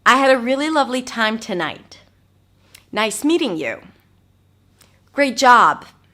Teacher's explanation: So I bring my voice up at the end, but then I drop it down. So it's called a rising, falling intonation.